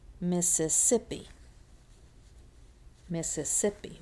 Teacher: It's the sip that has the tonic stress in English.